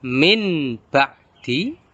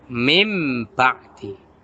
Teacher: membalikkan bacaan bunyi nun, sukun, dan tanwin menjadi huruf mim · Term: iklab